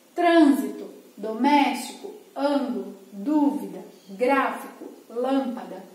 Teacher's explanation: E a terceira posição da sílaba tônica é a antepenúltima sílaba. Todas as palavras que têm a antepenúltima sílaba tônica, elas são classificadas como proparoxítonas.